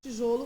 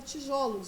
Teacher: o som fechado O da sílaba pronunciada com mais força transforma-se em som aberto O